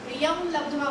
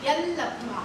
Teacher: अनुस्वाराच्या उच्चारापुढचं अक्षर जर ल असेल त्या अनुस्वाराचा ल होतो